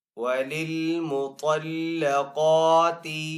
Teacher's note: قاف کو ایک الف دو حرکات کے برابر کھینچ کر ادا کریں گے کیونکہ قاف کے اوپر کھڑا زبر ہے